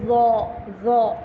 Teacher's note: इसी तरह अब आप देखें ज़ौ में, ज़ौ के अंदर भी आपको ज़बान ऊपर नीचे से बाहर निकालेंगे जैसे दाल पड़ा था, और बस इसको थोड़ा सा मोटा पढ़ लेंगे AW की साउंड पे